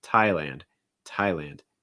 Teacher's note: for thailand you usually are going to pronounce the an sound does not usually get reduced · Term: ah sound